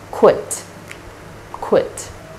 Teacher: After this consonant cluster, there's a short vowel I and ends with T, unvoiced consonant sound T. And this is pronounced as quit, quit.